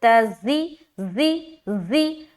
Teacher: زی میں سیٹی بھی آئے گی. زا کو جب ادا کریں گے نا تو سیٹی کی آواز آئے گی